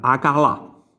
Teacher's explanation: abbiamo anteposto in questo caso una vocale, quindi la A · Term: prostesi